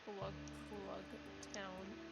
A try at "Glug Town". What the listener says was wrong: Glug Glug Town. I think you're overpronouncing the G.